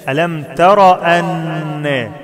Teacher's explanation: ألم تر أن، مش ترى أن، ما فيهاش ألف، ألم تر أن، والنون مشددة فيها غنة بمقدار حركتين